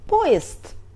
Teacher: The D are voiced consonants, but they are in the end of word, so we pronounce them like unvoiced.